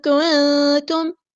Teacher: نون ساکن کی آواز کو چھپا دینا ہے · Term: اخفا